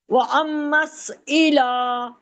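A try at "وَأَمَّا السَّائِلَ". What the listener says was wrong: نہیں نا وہ امس سین کو ڈبل پڑھنا ہے نا وہ ام پھر میم کو سین سے ملایا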